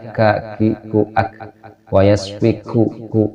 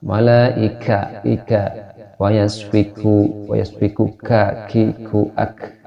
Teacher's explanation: ketika menyebutkan huruf kaf ini keluar sedikit anginnya, tapi tidak terlalu banyak, cukup terdengar keluar dengan telinga kita ya, keluar napas